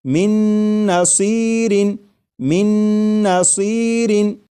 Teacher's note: میم کے بعد نون مشدد جو ہے اس کی آواز آئے گی اور غنہ کے ساتھ پڑھیں گے۔ جیسے من نصیر۔